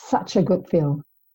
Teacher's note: okay so it's difficult to say a good film alright so the D drops and we say good film